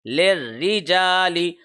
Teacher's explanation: اس سے پیچھے جو لام ہے اس کے نیچے زیر ہے، لام ڈائریکٹ را سے کنیکٹ ہوگا. للرجال را کے نیچے جب بھی زیر آ جائے تو را باریک حرف بن جاتا ہے